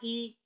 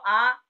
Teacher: अगर देखो जैसे मैं बोला ई, छोटी ई, बड़ी, इसमें मेरा जो मुंह है कम खुला, क्या बोल करके आप लोग देखो, छोटी ई, बड़ी, इसमें क्या होता है, हमारा जो मुंह है वह कम खुलता है, लेकिन अब तुम बोलो आ, बड़ा, इसमें पूरा मुंह खुल जाएगा।